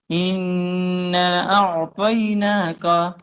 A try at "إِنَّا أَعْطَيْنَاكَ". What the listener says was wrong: لمبا لمبا کرو. اِنَّا أَعْطَيْنَاكَ.